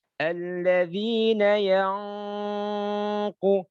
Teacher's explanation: Jangan lupa dengungnya dibaca tebal, terus panjangnya tiga harakat. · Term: ikhfa